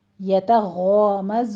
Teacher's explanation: यतग़ामज़ून में यतो नहीं कहना आपने, यतग़ामज़ून, ज़ून में ज़य की आवाज़ सीटी की लेकर आनी है